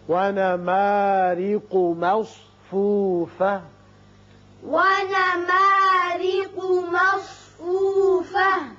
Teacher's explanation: را کے نیچے زیر ہے، اس کو باریک پڑھیں گے